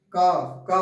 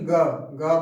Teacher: जैसे का बोलो, देखो आपका सिंपली का आवाज निकल रही है, और आप यहीं ग बोले तो आपके कंठ से थोड़ा सा वाइब्रेट होगा कंठ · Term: सघोष